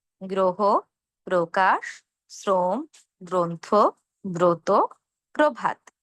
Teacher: অধ্বনির সঙ্গে কি রফলা আছে, তাহলে আমরা শুরুতে ও এর মতো করে উচ্চারণ করব।